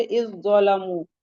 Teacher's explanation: اس کے بعد اگلا آتا ہے ادغام متجانسین، ایسے دو حرف جو مخرج میں متحد ہوں اور صفات میں مختلف ہوں، یعنی مخرج سیم ہوگا، دو حرف جو مخرج میں متحد ہوں مینس مخرج سیم ہوگا لیکن صفات الگ ہوگی، تو پہلے کا دوسرے حرف میں مکمل ادغام ہو جائے گا۔ جیسے اذ ظلموا، تو زال اور ذو کا مخرج، اس کا مخرج سیم ہے۔